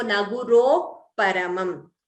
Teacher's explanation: So visarga followed by pa would be upadhmaniya